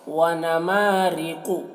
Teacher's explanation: ما کو کھینچیں گے، را کو باریک پڑھیں گے